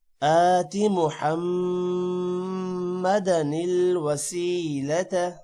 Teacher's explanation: محمدن میم پر غنہ ہوگا، وسیلت سین کے بعد یا ہے، تھوڑا سا لمبا کریں گے۔